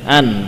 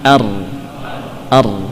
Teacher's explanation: Nun ujungnya, ra bagian ujung dengan melibatkan punggungnya